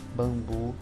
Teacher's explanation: quando a gente pronuncia antes Bambu a gente acaba percebendo que sai o som de uma semivogal é como se fosse uma vogal que estivesse aí embutida e não o som da letra n